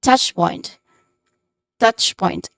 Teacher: The stressed syllable here is the first syllable, touch.